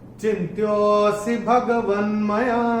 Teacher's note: तीसरे चरण में चैंटिंग के हिसाब से कोई नियम है नहीं, और चौथे चरण में भी चैंटिंग के हिसाब से कोई नियम है नहीं, मगर ये जो अवग्रह जो आ रहा है, जो एस हमको दिख रहा है, तो इसको हमको यो को थोड़ा सा खींच के बोलना पड़ेगा जिससे विलुप्त अ इसमें से निकल के आए। तो कैसे हम बोलेंगे इसको, चिन्त्योऽसि भगवन्मया।